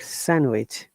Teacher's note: Remember, D is silent in sandwich, okay?